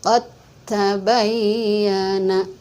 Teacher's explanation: Tapi ketika kita membunyikannya atau membacanya, huruf dalnya dilebur ke dalam huruf ta